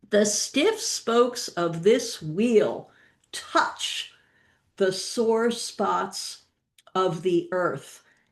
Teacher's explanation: there are six evenly stressed syllables in stiff spokes of this wheel. Then a sort of pause, touch, and then six more.